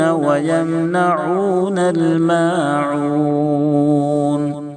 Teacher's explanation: عین کو دونوں جگہ درمیانی حلق سے ادا کریں تاکہ حمزہ سے نہ بدلے، یہاں پر بھی مد عارض وقفی ہوگا، 3 سیکنڈ یا 5 سیکنڈ کھینچیں گے۔